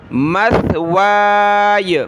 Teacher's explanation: سا پر زبان نکالیں، اس کی جگہ آپ نے سین کو نہیں پڑھنا